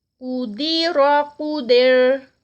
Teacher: تا لائٹ لام لائٹ، قدر، قاف موٹا اور را موٹا، قدر، جب را کو سٹاپ پہ کریں گے تو وہ لائٹ ہو جائے گی کیونکہ پیچھے زیر آ رہی ہے